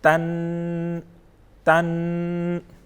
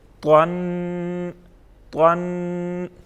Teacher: اب جو طا پڑھیں گے اس کو ہم موٹا پڑھیں گے، پر پڑھیں گے